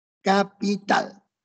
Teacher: Si yo tengo la palabra capital, yo veo que el acento está en tal.